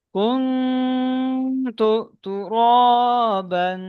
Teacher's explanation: ইজরা, কাফের উপর পেশ এসছে, পেশটি হলো হারাকাত, হারাকাতের পর তাদের উপর দ্বারা টান দেওয়া নিষেধ। নুন সাকিনের পরে হরুফ ইকফা 15টি অক্ষরের মধ্যে থেকে তা এসেছে, তাই নুন সাকিনের আওয়াজকে নাকে তুলে একালি পরিমাণ গুণা করে পড়তে হবে।